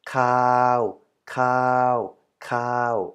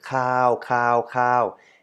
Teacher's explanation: so we have an aspirated ke sound so plus we have a long vowel completed by a Sonoran